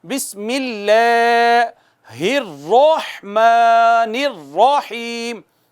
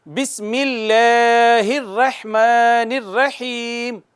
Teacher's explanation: را پر زبر ہے, موٹی پڑھی جائے گی, مفخم پڑھی جائے گی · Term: تفخیم